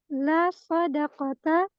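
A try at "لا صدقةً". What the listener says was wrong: La sodakotan. Ditanwin. Ini bukan isim la ya.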